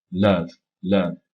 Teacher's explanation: C'est pas un son qui est aussi haut dans la bouche que le O de sort, c'est un petit peu plus bas. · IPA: /ʌ/